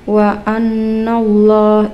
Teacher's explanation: ini lafadz Allah yang dibaca tebal karena sebelum lafadz Allah ada fathah